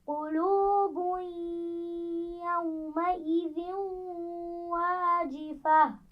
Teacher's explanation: قلوب يومئذ واجفة. قلوب، ایک تو واو مدہ ہے، دوسرا با کے اوپر تنوین ہے، اس کو آگے یا سے ملائیں گے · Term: غنہ